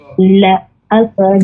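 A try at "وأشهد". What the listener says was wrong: Non, faut pas dire la, faut dire wa ashhadu.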